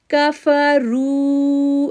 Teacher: را کو پورا آواز پڑھیں گے اوپر پیش ہونے کی وجہ سے، اور واو ساکن سے پہلے پیش ہے اس لیے بھی اس کو 2 سیکنڈ کے لیے کھینچیں گے. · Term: را موٹا